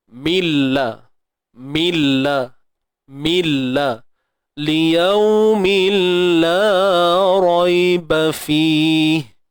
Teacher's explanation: Yang kita nak masukkan ialah tanwin tu ke dalam huruf lam. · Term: Idgham bila gunnah